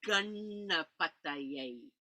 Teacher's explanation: the tongue on Ganapati is curling back like the tongue of Ganesha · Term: curling the tongue back